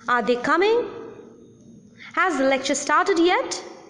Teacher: in questions also which demands an answer yes or no that is in yes no questions rising tone is used